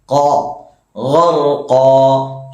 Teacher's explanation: ഖാഫിന്റെ മഖ്റജ് നാവിന്റെ അങ്ങേയറ്റം മേലെ അണ്ണാക്കിൽ മുട്ടിക്കുക.